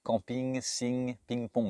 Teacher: Ça veut dire que là, l'air ne passe que par le nez et j'ai placé ma voix que dans le nez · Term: son nasal